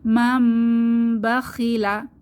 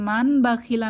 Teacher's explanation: নুন সাকিন বা তানবিন এর পরে যদি বা হরফ আসে তাহলে মিম দিয়ে পরিবর্তন করে পড়তে হবে গুন্নাহ সহকারে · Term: ইকলাব